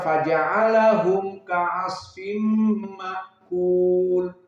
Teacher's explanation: dibaca tanpa silatul mim, tanpa ibdalu hamzah bimad. Maka dibaca faja'alahum ka'asfim ma'kul. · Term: madhab jumhur